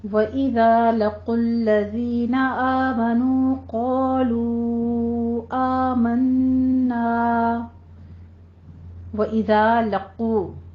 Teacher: قاف کو آپ نے پر پڑھنا ہے اور ضمہ ہے ہونٹ گول کیجیے. لَقُوا الَّذِينَ نہیں کہنا لام کو باریک رکھنا ہے.